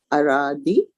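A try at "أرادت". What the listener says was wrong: Ara, no, that is ta with a sukun. Aradat. So arada, aradat.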